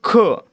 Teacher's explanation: ख मध्ये ह चा उच्चार होतोय का होतोय म्हणून त्याला काय म्हणणार आपण महाप्राण